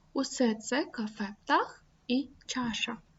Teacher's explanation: Усі приголосні звуки у цій фразі є глухими. Розберемо. С, Ц, К, Ф, П, Т, Х, Ч, Ш. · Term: глухі звуки